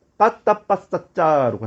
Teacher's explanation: 성대를 딱딱하게 만들면서 나는 소리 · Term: 된소리